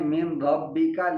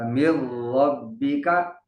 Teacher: जैसे मिन, मीम नून ज़ेर मिन, आगे रा मुशद्दद है, तो मिन रब्बी का अरब के अंदर कहीं कहीं है कि वो पढ़ते हैं मिन रब्बी का, लेकिन समझने की बात यह है कि नून साकिन के बाद हरूफ यरमलून में से रा आ गया है तो गुन्ना नहीं होगा मिर रब्बिका।